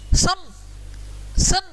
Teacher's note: जिनको बोलते समय हवा केवल नाक के रास्ते से क्या आती है बाहर आती है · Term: स्वार